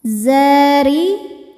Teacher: Ro-nya dibaca tartik karena harokatnya kasrah, maka ro-nya tipis. Zari'un. Saat berhenti di sini hukumnya adalah mad arid li sukun.